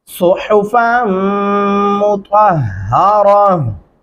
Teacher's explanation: और यहाँ पे स्वाद को स्वाद की जगह से बारीक हा पढ़ेंगे, आगे गुन्ना करेंगे, और त्वा को ता की जगह से अदायगी नहीं करनी, त्वा ही पढ़ेंगे और हा भारी आवाज में पढ़ेंगे